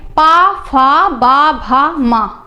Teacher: आप बोलिए पा, पापा। आपके ओठ जो हैं एक दूसरे को स्पर्श कर रहे हैं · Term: ओष्ठ